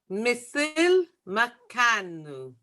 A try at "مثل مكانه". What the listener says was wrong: But you don't have to say مكانه. There is no emphasis on the end. Just مثل مكانه. مثل مكانه.